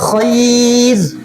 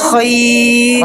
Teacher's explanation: را ساکن سے پہلے اگر یا ساکن ہو تو را باریک ہوگی